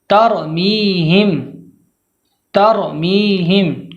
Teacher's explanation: تا کو باریک پڑھنا ہے، را کو پر پڑھنا ہے، میم کے بعد یا مدہ ہے ، یا مدہ کو کھینچ کر پڑھنا ہے، میہم، میہم۔ اب